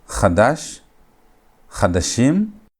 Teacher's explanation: And gutturals never accept schwa. And so instead of having a schwa, the kamets is going to reduce into a hatef patach.